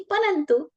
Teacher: परंतु में हमने ना की आवाज शामिल की उच्चारण में